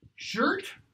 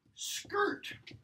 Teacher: So where Old English has ch, in Old Norse that would be a k sound. Similarly, where Old English has a sh, in Old Norse that would be a sk sound.